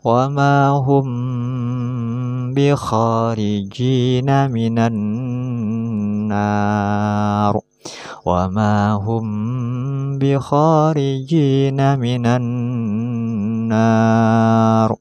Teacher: Kita tahu di video sebelumnya huruf mad ada 3, yaitu fathah dengan alif, kasrah dengan ya mati, dan dhammah dengan wawu mati. Yang mana apabila ra diwaqafkan jatuh setelah huruf mad alif, maka harus dibaca tebal atau tafkhim.